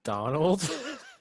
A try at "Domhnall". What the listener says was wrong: There's no ALD. It's DOMHNALL. Donald. No, I don't see a D.